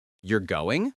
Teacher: A rising intonation at the end of a sentence indicates a question. You're going sounds like a question because the voice rises.